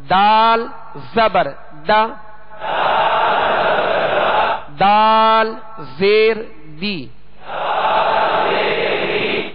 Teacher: دال کا مخرج بھی الگ ہے، یعنی زبان کی نوک اور اوپر کے سامنے والے 2 دانتوں کی جڑ، یہ اس کا مخرج ہے دال کا